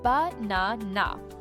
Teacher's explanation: you stress the second syllable